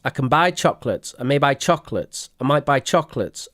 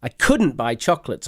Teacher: with the pronunciation of these sentences we do not stress the modal verb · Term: pronounced weak